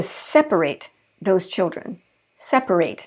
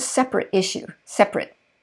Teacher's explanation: you hear the eight in the verb but the it in the adjective